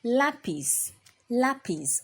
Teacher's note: we also have the accent on the A and so you raise your voice at a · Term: word stress